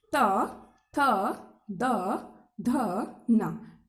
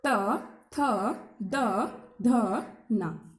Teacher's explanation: जब हम इनका उच्चारण करेंगे तो हमारी जीभ दांतों पर जाकर टकराएगी। बोलकर देखिए त, कहाँ गई जीभ, दांत के पास गई ना, त थ द ध न, वहां पर टच हुई, किस पर, दांतों पर, इसलिए इनका उच्चारण स्थान क्या हो गया, दंत।